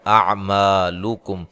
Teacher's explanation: میم پہ الف مدہ ہے، کاف کو باریک پڑھنا ہے، لام کو باریک پڑھنا ہے، اور یہاں ملانے کی صورت میں میم ساکن کا اظہار ہے۔